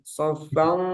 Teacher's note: huruf sod karena dia tebal, jadi gunanya juga tebal. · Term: ikhfa hakiki